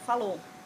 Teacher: Suprime o ditongo ou do final do verbo, falou.